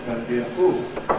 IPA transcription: ˈdəʊnt bi ə ˈfuːl